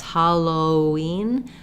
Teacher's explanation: We do have a W sound. We don't need a break between the O and the ween.